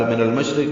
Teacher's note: من المشرق میں اب لام پڑھا جائے گا کیونکہ آگے میم آ رہا ہے وہ حروف قمری میں سے. شین ساکن پہ ہمس اور تفشی ہے آواز منہ میں پھیلے گی اور سانس کی آواز جاری رہے گی